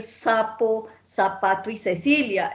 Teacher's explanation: eso lo pronunciamos todo con ese · Para nosotros es igual decir sapo, zapato y Cecilia, eso lo pronunciamos todo con S, ¿cierto? En España no, ellos hacen la diferenciación, cuál es la C, cuál es la Z, cuál es la S, para nosotros eso suena igual.